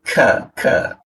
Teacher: K karena terbuka akhirnya menimbulkan angin ya.